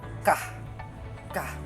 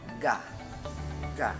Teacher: Dito naman, ang ibabaw ng dila ay ng punong dila ay dumidikit sa velum o malambot na bahagi ng ngalangala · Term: pangalangala